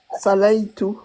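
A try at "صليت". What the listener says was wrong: Appuie sur l'em. Tawadda'tu wa sallaytu.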